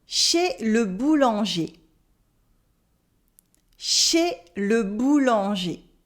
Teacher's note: And also in boulanger, you have a nasal en. In boulanger, that's a nasal sound.